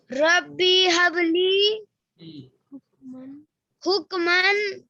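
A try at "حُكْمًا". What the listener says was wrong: حکمو باؤ کے ساتھ حکمو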